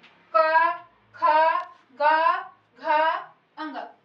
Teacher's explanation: हमें महसूस हो रहा है कि ये गले से निकल रहा है। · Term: कंठ वर्ण